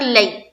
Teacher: زبر ہے، یا لین ہوگا. یا لین کو نرمی سے نرم آواز کے ساتھ جلد اور معروف پڑھیں گے